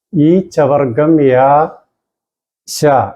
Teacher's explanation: എണ്ണാക്കിൽ തൊടുമ്പോൾ ഉച്ചരിക്കുന്നതായ അക്ഷരങ്ങളാണ്. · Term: താലവ്യമാണ്